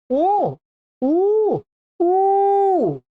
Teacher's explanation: का उच्चारण लंबा होता थोड़ा, जैसे ऊ ऊ ऊ, ऐसा। इसके 3 गुने काल में इसका उच्चारण होगा। कहते हैं ऊ ऊ ऊ के काल के समान काल वाला। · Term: प्लुत